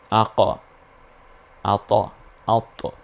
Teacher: তোয়া এবং কফটা একটু উপরের দিকে যায়, জবর জবর মনে হইবে, স্পষ্ট জবরও আসবে না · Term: কলকলার হরফ